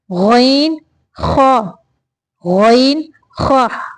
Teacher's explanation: हलक के शुरू के हिस्से से जो मुंह की तरफ है, यानी हलक का वो हिस्सा जो मुंह की तरफ है, वहां से गईन और खा निकलते हैं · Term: हरूफ हल्किया